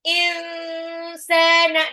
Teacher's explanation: Bukan obat itu insana. Tapi insana nunnya tuh disamarin. Jadi nggak kedengeran jelas bahwa itu nun sukun. Insana disamar dan ditahan. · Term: ikhfa